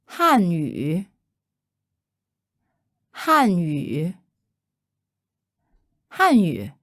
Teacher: fourth tone Han refers to the predominant Han ethnicity in China and third tone you means language